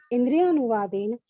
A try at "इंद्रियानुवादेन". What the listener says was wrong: इंद्रियानुवादेन, है ना? इंद्रियानुवादेन नहीं बोलना चाहिए, इंद्रियानुवाद, उसमें अ मिला हुआ है। इंद्रियानुवादेन खाली न बोलते तो वो हो जाता है, हलंत वाला हो जाता है ना।